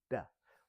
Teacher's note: Whereas consonants, we have to have contact of multiple points of our mouth at the same time. So for like the D, my tongue is in the roof of my mouth, duh. Whereas like for the E, for the eh, my tongue's flat and I'm just blowing air out.